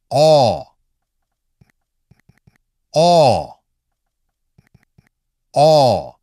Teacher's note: Keep the tip of your tongue behind the lower front teeth. Open the jaw round the lips and make a short aw sound. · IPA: /ɔ/